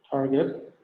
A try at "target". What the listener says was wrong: Target. Okay, so many Indonesian nowadays, I don't know why, say target. So it's actually yeah, with the g sound, not the j sound. So target, still target.